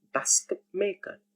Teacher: That sound t changes to p before m, b, or p.